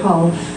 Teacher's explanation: we don't pronounce the L because it's rather hard to say half so we've just dropped the L